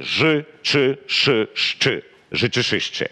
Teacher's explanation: Це дуже тверді шиплячі.